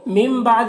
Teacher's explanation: نون ساکن کے بعد با ہے تو نون کو میم سے بدل کر غنہ اور اخفا کے ساتھ میں پڑھیں گے، اسے قلاب کہتے ہیں۔